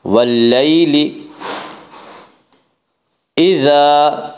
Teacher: واللیل اذا, الف مدہ, الف ہمیشہ مدہ ہوتا ہے, الف سے پہلے ہمیشہ زبر ہوتا ہے, الف مدہ کو ایک الف کے برابر کھینچ کر پڑھیں گے